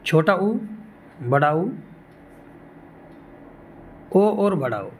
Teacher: इन चारों को आप बोलोगे तो होठों की शेप एक गोल सर्किल के रूप में हो जाएगी · जिन स्वरों को बोलने में होठ गोलाकार हो जाए उनको व्रतमुखी बोलते हैं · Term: वृत मुखी